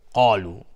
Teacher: قاف از حروف استعلاء غلیظ تلفظ میشه، الف هم تابع قاف غلیظ